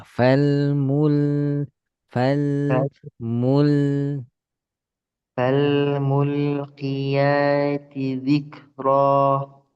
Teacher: Tipiskan lam sukun kedua seperti lam sukun pertama